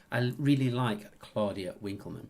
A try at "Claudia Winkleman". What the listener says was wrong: You said Claudia Willkommen. Claudia Willkommen. Claudia Willkommen.